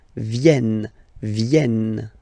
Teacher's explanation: this classic ending ENT for the third person of the plural is here, but phonetically it doesn't exist, so you don't pronounce it.